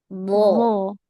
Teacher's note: jadi yang makhrajnya itu ujung lidah. Nah, keluar sedikit nempel ke ujung gigi seri atas